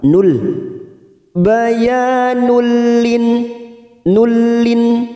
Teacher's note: Bayanul ada huruf nun yang berharokat duma tanwin, dumatain yang bertemu lam. Nun sukun atau tanwin jika bertemu dengan huruf lam ro, maka namanya bacaan idgham bila gunnah, hanya masuk tanpa mendengung, tanpa ditekan lama-lama.